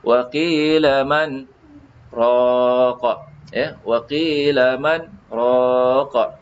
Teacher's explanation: Sakta tu satu nafas tapi kita berhenti. Ya, selama 2 harkat. Bukan 2 saat, 2 harkat ikut kadar bacaan ya.